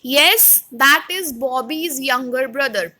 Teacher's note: I am putting a stress on yes. After that, I am taking a short pause, and that pause is also represented by comma.